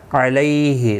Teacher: لی یالین ہے، تھوڑا نرمی کے ساتھ کھینچ کر ادا کریں گے